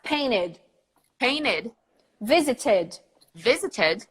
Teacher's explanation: at the very end of the word we're gonna add a vowel and a D